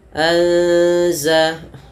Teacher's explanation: Kemudian fa'anzalna anza, ya, ada nun mati bertemu za, kita namakan dengan ikhfa. Cara membacanya yaitu huruf nunnya samarkan kepada huruf zalnya langsung.